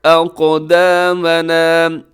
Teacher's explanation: قاف موٹا پڑھا جائے گا، قاف کو باریک نہ کیجیے گا اور قاف قلقلہ بھی ہوگا